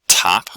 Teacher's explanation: the t consonant it can be aspirated like in the word top